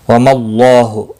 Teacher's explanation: اللہ کا لام زبر کی وجہ سے پر پڑھا جائے گا